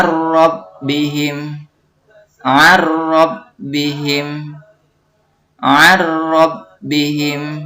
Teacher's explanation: Idgham Bilaghunnah artinya melebur tanpa disertai dengung · Maka kalimat ar-rabbihim harus dibaca idgham bila guna, meleburkan huruf nun sukun ke dalam huruf ro tanpa disertai dengung